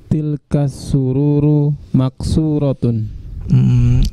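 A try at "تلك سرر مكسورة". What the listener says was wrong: Sururnya pendek. Sururu.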